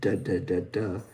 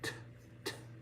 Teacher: So D is the alveolar stop voiced, da, da, da, da. When we don't use our vocal cords, that d, d, turns into t, t,